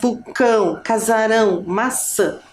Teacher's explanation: o A não tem som aberto nem som fechado. É um som que sai como se fosse pelo nosso nariz. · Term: som nasal